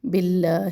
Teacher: منا تشدید اور الف مدہ جو ہے دونوں کو ایک ایک چپنا لمبا کر کے پڑھنا ہے. باللہ اب یہاں پر اللہ کا نام جو ہے اسم جلالہ، اس کو ہم باریک پڑھیں گے اس لیے کہ باقی نیچے زیر ہے